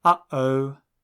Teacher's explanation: the sound written as an apostrophe actually exists in English too it is the slight gap between sounds in uhoh linguists call this sound a glottal stop